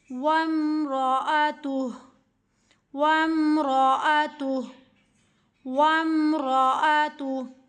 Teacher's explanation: ہا کو ساکن کر دیں گے، تا کو ہا کے ساتھ ملا کے ہا کی آواز کے ساتھ پڑھیں گے۔